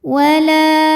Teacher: Sebab ada alif yang sebelumnya berbaris fathah, maka huruf lam panjang 2 harokat. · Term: mad tabi'i dhahiri